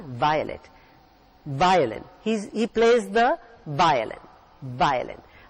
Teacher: it is always pronounced with the under lip being bitten by your upper teeth